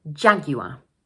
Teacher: This word has three syllables Ja-gu-ar, and the first one is stressed.